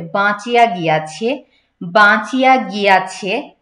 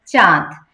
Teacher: নাসিক্য চন্দ্রবিন্দু যে জায়গায় থাকবে সে জায়গায় দেখবেন একটু নাসিক্য প্রভাব দিতে হবে